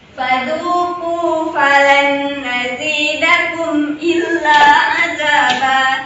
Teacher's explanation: Nun sukun bertemu dengan huruf nun. Dibaca dengung. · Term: idgham bi gunnah